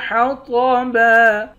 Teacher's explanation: طاء کو موٹا پڑھیں گے، آخر میں دو زبر کی تنوین ہے، دو زبر کی تنوین میں جب وقف کرتے ہیں تو ایک زبر بن جاتا ہے۔